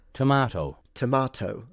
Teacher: It's like the T is different. Interesting. It's more of a fricative.